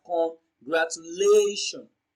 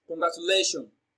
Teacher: congratulations is pronounced and broken down into syllables as congratulations so the fourth syllable lay receives the stress